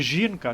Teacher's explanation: літера ж позначає звук ж і він уже пом'якшений бо далі йде звук і